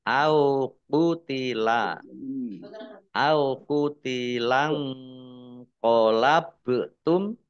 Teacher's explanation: nun sukun bertemu dengan huruf qaf bacaan ikhfa dibaca samar-samar. Ba sukun bacaan kolkolah dibaca memantul ditampakkan pantulannya.